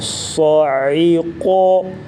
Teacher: صا، عین زیر عی، صاعی، قاف زبر قا، صاعقا، وقف صاعقو، صاد کو پر پڑھیں گے موٹا اور عین کی آواز گلے سے نکالیں گے واضح فرق کر کے، اور قا کو بھی پر پڑھیں گے